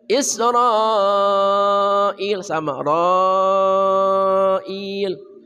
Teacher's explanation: 4 harokat mad wajib muttasil. Mad tabi'i bertemu hamzah di satu kata.